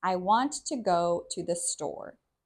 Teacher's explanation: we stress want, go, and store because those are the most important words in the sentence. Even though I is the subject and is also important, it isn't as stressed.